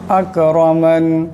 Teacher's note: এখানে রার উপর জবর আছে, রাকে মোটা করে পড়তে হবে